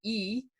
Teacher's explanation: If you make the sound e, your tongue is near the top of your mouth. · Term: high